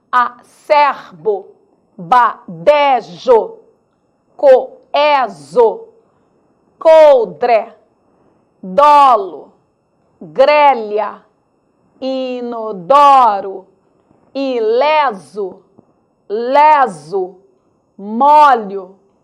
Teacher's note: devemos ler essas palavras sempre com timbre aberto